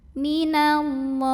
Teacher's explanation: Lalu alif lamnya dinamakan dengan alif lam syamsiyah karena alif lam menghadapi huruf syamsiyah yaitu lam. Maka alif lam tidak perlu dibaca, idgham syamsi.